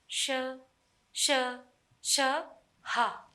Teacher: श्वास वायु मुख से रगड़ खाती हुई बाहर निकलती है, इसलिए इन्हें ऊष्म व्यंजन कहते हैं।